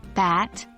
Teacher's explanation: The B sound, as in bat, is a voiced consonant. You'll notice a vibration in your vocal cords when you pronounce it.